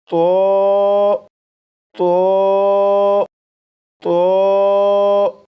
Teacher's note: اس لیے اس حرف کو پڑھنے کے لیے دو باتوں کا خیال رکھیے گا۔ نمبر ایک، زبان کی نوک اوپر سامنے کے دو دانتوں کی جڑ سے لگا کر پڑھے گا۔ نمبر دو، آواز کو موٹا کر کے پڑھے گا، جیسے تو تو 4 مرتبہ پڑھے گا۔